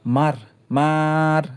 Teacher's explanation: এটি টেনে লম্বা করা যায় না, তাই এটি বদ্যাক্ষর।